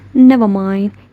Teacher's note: when you say this phrase slowly with a falling tone falling low tone it can mean you are bothered or upset